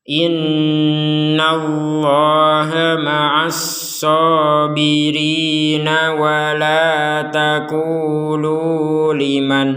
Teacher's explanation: Nah, menggabungkan ayat sehingga tidak kuat nafas, misalkan berhenti di sini, maka nun sukunnya dibaca dengan jelas karena tidak digabungkan dengan huruf ya.